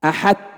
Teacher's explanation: لو أننا أدغمنا إدغاما كاملا لقلنا أحت، لا يبقى للطاء شيء، لكن هذا ما يقرأ به، لابد أن يبقى صفة للطاء، صفة الإطباق.